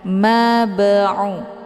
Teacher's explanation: huruf ba-nya dipantulkan dengan pantulan ringan. Mab'u, keluar bunyi b. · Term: qalqalah sughra